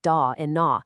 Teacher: distinctive retroflex sounds like da and na found in Indo-Aryan languages